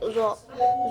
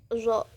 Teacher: Cara keluarnya itu adanya gesekan. Do. Nah, posisi pita suaranya itu majhur bersuara. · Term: huruf Do